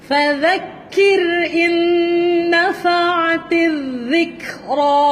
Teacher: Dhal hujung lidah keluar di antara gigi atas dan bawah. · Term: Huruf dhal